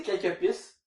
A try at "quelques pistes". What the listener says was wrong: C'est bon de prononcer le ST, parce que c'est comme quelques pistes. J'ai comme peur que tu prononces pas la fin.